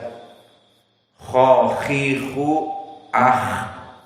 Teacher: kha makhrajnya adalah adna al-halq, paling mendekati kepada lisan